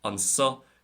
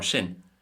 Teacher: in Munster, most speakers will pronounce it with a sharp S